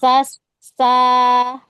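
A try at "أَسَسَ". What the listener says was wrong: Belum, sofirnya belum kedengeran, belum mengalir. As, arahkan ke bawah. Jadi arahkan sofir itu ke bawah. Asa. Dan ini kurang ke atas deh.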